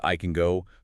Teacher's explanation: the word can often reduces to can with a schwa. It's very hard to catch if you're listening for the full clear vowel sound.